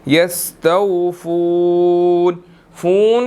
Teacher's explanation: فون کو لمبا کریں گے، واو مدہ ہے، 1 سیکنڈ اس کو لمبا کرنا ہے